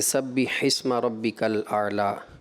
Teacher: کسرہ آپ کا مجہول کی طرف جا رہا ہے